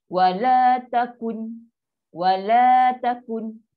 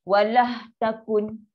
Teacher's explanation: Penambahan huruf ha, ni ha bulat lah ha, ketika menyambung bacaan · Ada bunyi punya ha tu, walah. Dia nak lepaskan lam tu, dia jadikan ha.